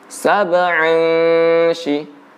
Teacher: tanwin bertemu dengan shin maka didengungkan